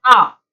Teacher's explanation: तो अ की अपेक्षा आ में 2 गुना समय लग रहा है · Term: दीर्घ स्वरों